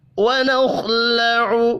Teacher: خا ساکن پر قلقلہ نہیں کرنا، خا بھی پر پڑھا جائے گا، حروف مستعلیہ ہے